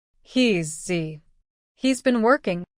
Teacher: working all right say it after me he's been working now even though there's an S it sounds a little bit like a z or a z sound